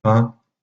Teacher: une autre assimilation, celle du i nasal, avec la prononciation de la diphtongue AI nasalisée, d'où le fait que finalement, dans la langue orale, dans la prononciation orale, le mot pain, P-I-N, comme vous voyez au début, est prononcé de manière à peu près identique que le mot pain, P-A-I-N.